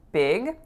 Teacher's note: the word big has a lax I sound